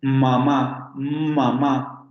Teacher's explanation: este sonido se pronuncia con los labios cerrados